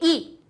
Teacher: ई निकलने के लिए वायु हमारी तालु से टकराई, तब ई निकली